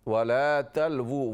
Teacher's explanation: वाव उल्टा पेश वू होंठों से अदा करें।